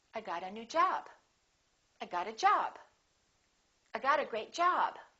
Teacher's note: They're both content words, but job gets more stress because it's a second word.